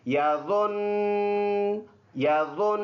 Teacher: تو ادھر ہم نے پیش کو تو سائلنٹ کرنا ہے، لیکن شد برقرار رہے گا۔ اب اس شد برقرار رہنے کی وجہ سے اس میں جو وائبریشن سا ہے، تڑتڑاہٹ سا ہے، وہ برقرار رہے گا۔ تو ہم اس کی وقف ایسے کریں گے، یظن یظن۔